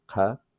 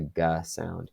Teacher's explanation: pronounced in standard Arabic as a voiceless uvular stop, qa. And this is true also for pre-Hilali varieties.